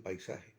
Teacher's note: Se une la a que es una vocal fuerte, con la i, que es una vocal débil.